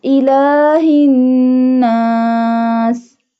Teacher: We stretch the lam a little bit because it has standing fatha sign. We stretch the standing fatha sign up to 2 harkat or up to 2 alif.